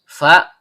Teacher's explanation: huruf bibir, yaitu perut bibir bawah bertemu dengan ujung gigi seri atas